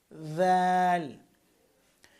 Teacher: দাল উচ্চারণ করবেন জিহ্বার আগা উপরের দাঁতের আগার সাথে লাগিয়ে